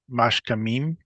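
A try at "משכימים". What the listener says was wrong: Right, what vowel? What vowel was under the kaf? Mashkimim. Right, mashkimim.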